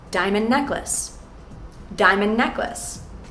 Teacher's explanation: It would sound like the D at the end of diamond is gone when you say these words quickly together.